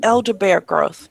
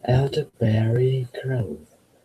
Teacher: But the word is berry. We have to hear the long E on the end.